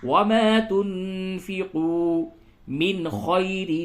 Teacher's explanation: وما تنفقوا، نون ساکن کے بعد فا ہے، اخفا ہوگا، اور واو مدہ ہے، کھینچ کر کے تھوڑا پڑھیں